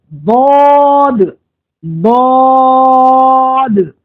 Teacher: ضاد میں اور ضا میں دونوں میں فرق ہے. ضاد کو جب آپ ادا کریں گے تو زبان کی کروٹ کو اوپر کے دانتوں کی جڑ میں ملائیں گے